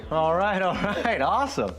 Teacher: Para que se te haga fácil pronunciar esta palabra, alright, puedes omitir el sonido de la L y simplemente decir alright